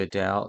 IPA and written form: əˈdeɪl (Adele)